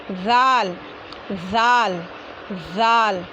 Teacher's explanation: हाँ, जैसे ज़बान की नोक सामने के ऊपर वाले दो दांतों के किनारे को लगाते हैं, सा बोल देंगे, वैसे ही ज़ाल भी ज़बान की नोक और सामने के ऊपर वाले दो दांतों के किनारे को लगकर बोलेंगे, है ना। ज़ाल ज़ाल ज़ाल याद रखिए, ज़ाल को ऐसा ही बोलना ज़रूरी है।